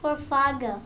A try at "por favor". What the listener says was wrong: no. Por favor. Por fav. Por favor. There's no G in there.